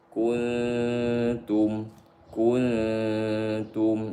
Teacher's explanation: nun sukun bertemu ta, maka nunnya dikosongkan daripada tanda sukun, disamarkan di sisi ta, disebut ikhfa haqiqi.